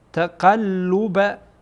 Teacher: اینجا قاف با لام وصل میشه گویا دو تا لامه